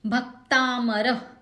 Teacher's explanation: भ ह्रस्व है, क से त जुड़ा हुआ है यानी कि जुड़ाक्षर है, सो भ पे जोर देंगे।